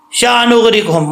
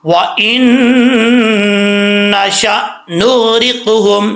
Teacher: حمزہ کو جھٹکے کے ساتھ پڑھتے ہیں، اس میں قلقلہ نہیں کرتے، تو ہم نے بغیر قلقلہ کے پڑھنا ہے، جھٹکے کے ساتھ، ٹھیک ہے۔ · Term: جھٹکا